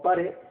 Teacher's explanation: la sílaba tónica, que es la de mayor pronunciación, es red. Y la sílaba átona, que es la de menor pronunciación, es pa.